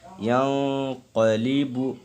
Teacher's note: نون ساکن کے بعد حروف اخفا کے 15 حرفوں میں سے قاف آ رہا ہے، تو یہاں پہ اخفا بھی کرنا ہے